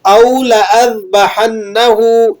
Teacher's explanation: الف کو لمبا کر کے نہیں پڑھتے بلکہ بغیر کھینچے ادا کرتے ہیں